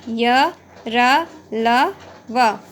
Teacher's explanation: अंतःस्थ का अर्थ है स्वर और व्यंजन के बीच में स्थित इनका उच्चारण जीभ, तालु, दंत और होठों के निकट आने से होता है, किंतु श्वास में रुकावट कम होती है। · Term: अंतःस्थ व्यंजन